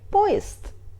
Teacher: З, Д are voiced consonants but they are in the end of word, so we pronunciate them like unvoiced — С, Т. And Е here we pronunciate like [и] because Е is unstressed.